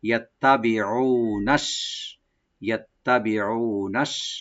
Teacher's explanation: টান হবে না, বি বলবো, ও আইনটাকে রাইট দিয়ে একালে টানবো, নুন এখানে সিনের সাথে মিলে পড়বো